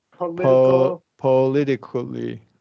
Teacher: the first O is a schwa.